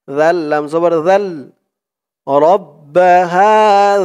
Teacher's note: জিহ্বার মাথা উপরের দাঁতের মাথার সাথে লাগবে জালের উচ্চারণ করার সময়